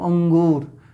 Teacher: तो जो आवाज है वो अधिकतम किससे कहां से आ रही है? नाक से।